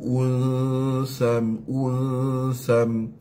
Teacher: Baris dua berjumpa dengan sin. Jadi ikhfa. Sam. Wajibul ghunnah.